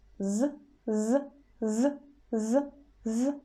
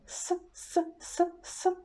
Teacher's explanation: So sound z is voiced sound, and the pair for it is s, which is voiceless. We make the same position.